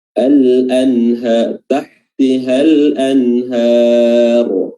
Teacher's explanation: huruf ra yang didahului oleh fathah, bacaannya tebal at-tafkhim, dan di sini merupakan juga contoh dari mad arid lis-sukun.